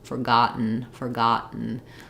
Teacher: we do say the T here but we don't release it another unreleased T because it's followed by the syllabic n n Sound we don't really use a vowel at the end